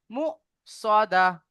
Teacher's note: সাকিন যুক্ত হামজাকে একটু ঝটকা দিয়ে পড়তে হয়।